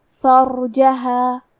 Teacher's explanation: کلمت فرجہا میں حرف الراء پہ جزم ہے تو ہمیں را کو جزم سے پڑھنا ہے اور ہم یہ حرف کو موٹی آواز میں بھی پڑھیں گے